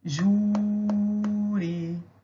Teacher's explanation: Perceba que eu demorei mais no ju, sendo então uma paroxítona terminada em I.